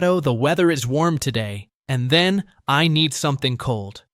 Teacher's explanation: Pay attention to the gentle rise on warm and the clear D sound in cold.